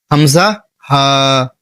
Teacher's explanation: হলকের শুরু মানে হচ্ছে গলা। গলার শুরু যেখানে সেখান থেকে আপনাকে এই দুইটি হরফ উচ্চারণ করতে হবে।